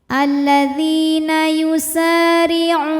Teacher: Alladzina yusa. Sa mad tabi'i dhahiri karena ada alif didahului harokat fathah, maka sin panjang 2 harokat.